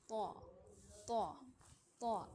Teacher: मोटा त यानी आवाज की मुंह भरकर मोटा करके अदा किया जाता है